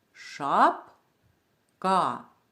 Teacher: прямокутнички і ми бачимо значок на першому наголошеному складі шап ка перший склад вимовляємо голосніше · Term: наголошений склад